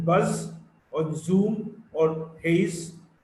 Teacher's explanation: Z is a voiced alveolar fricative.